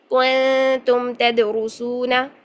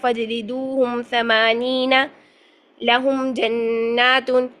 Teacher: میم کے دونوں ہونٹوں کے خشکی والے حصے کو ملا کر بغیر غنہ کے ادا کرنا · ہم میم ساکن پر غنہ نہیں کر رہے، بغیر غنہ کے ادا کر رہے ہیں، باقی تمام صفات میم کی ادا ہو رہی ہیں، میم کی جو ہے وہ جہر ادا ہو رہی ہے، توسط ادا ہو رہی ہے، استفال ادا ہو رہی ہے، انفتاح ادا ہو رہی ہے، ٹھیک ہے۔ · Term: اظہار شفوی